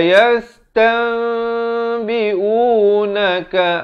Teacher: ditukarkan bunyi nun kepada bunyi mim dengan kadar panjang 2 harakat. Wa tapi bibir itu sekadar bersentuhan saja. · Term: hukum iqlab